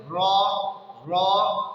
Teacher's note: جتنی فطری طور پر کیفیت اس میں آ رہی ہے اتنا ہی تکرار ہوگا، اس سے زیادہ نہیں ہوگا۔ مثلا صحیح تو یہ ہے کہ ہم یوں کریں را، لیکن اگر اس سے زیادہ تکرار کرنے کی کوشش کریں را، یہ حرف صحیح سے ادا نہیں ہوگا، بلکہ جو فطری اس میں تکرار ہے صرف وہی باقی رہے گا۔